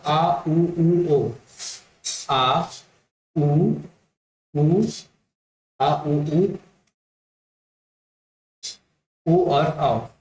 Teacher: पश्च भाग ये जीभ के पीछे वाले भाग से उच्चारण होती है।